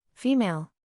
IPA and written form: ˈfiː.meɪl (Female)